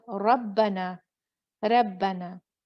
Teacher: रा पे जब फतहा होता है, जबर होती है, वो मोटा पढ़ा जाता है।